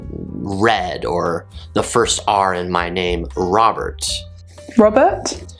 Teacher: initial r sounds in british english are still pronounced